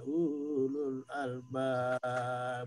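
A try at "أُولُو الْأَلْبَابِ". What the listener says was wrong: Ulul albab pendek saja.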